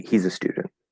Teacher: stress on stew for student that gets the stress we fall at the end following intonation because it's the end of just a normal statement um he's not stressed a is not stressed and it's just